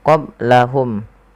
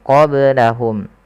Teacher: qablahum ada ba sukun maka dibaca dengan qalqalah. Kesalahan yang terjadi adalah tidak memantulkannya.